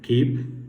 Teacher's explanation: Here we have the consonant ku, which is voiceless, velar, the plosive